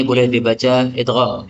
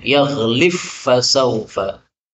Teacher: Ba-nya hilang ya, menjadi fa, yaghlif fasaufa.